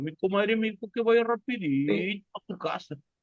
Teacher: En el norte, en Piura, básicamente hablan como cantando.